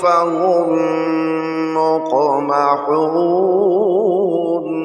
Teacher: میم کو میم کے ساتھ جب ملائیں گے تو غنہ کریں گے، ہجے میں بھی غنہ ہوگا اور رواں میں بھی، دونوں صورتوں میں غنہ ہوگا، فا زبر فا، ہا میم، میم پیش ہم، فہم، میم قاف پیش مق، میم زبر ما، مقما، ہا واو پیش حو، مقمحو، نون زبر نا، مقمحون، آگے وقف، مقمحون، رواں کیسے پڑھیں گے؟ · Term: ادغام شفوی